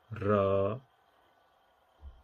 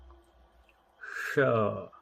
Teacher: Now in the retroflex, the sonorant is ra, and the sibilant is sha.